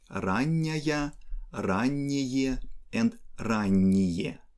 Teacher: here we don't have stress at the end, and we pronounce n in soft way. So we want to keep this softness and come to forms ранняя, раннее, and ранние.